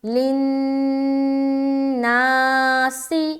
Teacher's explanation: آگے لِلنَّاسِ، لام نون زیر لن، نون الف زبر نا، لِلنَّاسِ. نا میں الف مدہ کر رہے، لیکن اس سے پہلے نون کے اوپر شد ہے تو نون مشدد کا غنہ بھی کریں گے